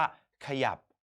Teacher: เราจะอ่านพยางค์หน้าแค่กึ่งเสียงอ่านเท่านั้นเราจะไม่อ่านเสียงเต็ม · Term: อักษรนำ